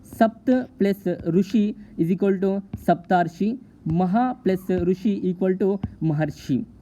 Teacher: ह्रस्व आ प्लस रू जब मिलते हैं तो उच्चारण अर हो जाता है और दीर्घ आ प्लस रू मिलते हैं तब भी उसका उच्चारण अर हो जाता है। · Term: गुण संधि